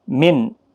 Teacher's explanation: نون ساکن کے بعد حرف حلقی کا عین ہے، اظہار حلقی ہوگا، گنہ نہیں ہوگا